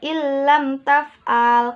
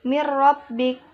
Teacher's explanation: Hukum bacaan disebut idgham bila gunnah apabila ada nun sukun atau tanwin bertemu dengan huruf lam dan ro. Cara membacanya mengidghamkan nun atau tanwin pada lam dan ro tetapi tanpa mendengung